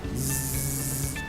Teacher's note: Numéro, Y, La letra Y, que habíamos dicho que es un punto intermedio entre una vocal y una consonante, por lo que se considera una semiconsonante, Y, Z, que no es como el sonido en español, sino que se coloca la lengua en la parte central de los alvéolos y se hace vibrar la caja torácica, de esta manera, zzzz, como si fuera el zumbido de una abeja.